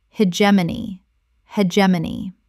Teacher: the stress on the second. The G makes a J sound.